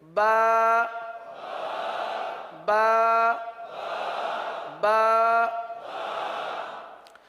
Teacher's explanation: با کی بجتی ہوئی آواز، اور یہ صرف تر حصے سے ہی ادا ہو سکتی ہے، خشک حصے سے ادا نہیں ہو سکتی۔